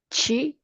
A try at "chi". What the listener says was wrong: Cheer. Cheer. R, a little bit of an R at the end.